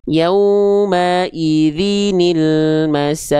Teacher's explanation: si tanwinnya dihilangkan langsung dibentuk dengan bunyi nun kecil dengan harakat kasrah. Jadi, nun wiqayah itu selalu dibaca ni.